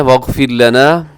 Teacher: جی واغفر لنا، اور یہاں را ساکن ہے، واغفر لنا، را ساکن سے پہلے زیر ہے تو آپ یہاں کیا کیجئے گا، را کو باریک رکھیے گا